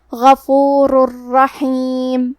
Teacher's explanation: ادغام کا معنی ہے حرف کو حرف میں داخل کرنا تو ہم تنوین کو را میں ملا کے بغیر غنہ سے لیکن تشدید کے ساتھ یہ حکم کو ادا کریں گے